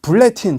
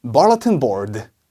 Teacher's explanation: 약간 으 같은 소리가 나서 bulletin이라고 해요